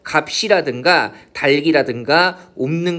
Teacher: 두 개의 자음이 오지만 발음할 때는 하나의 자음만 발음이 되는 거잖아요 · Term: 자음군 단순화